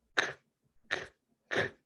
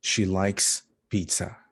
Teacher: The last sound in like is k, k, k, no voice. So we use the S.